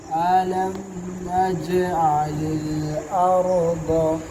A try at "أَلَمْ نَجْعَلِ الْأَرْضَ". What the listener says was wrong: कलकला ना हो अर्द और दूसरा नजअलिल रा पे आवाज रोक लो ना और